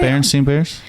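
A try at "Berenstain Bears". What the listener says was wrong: It's Berenstain I think it's A-I-N. everyone thought it was Steen.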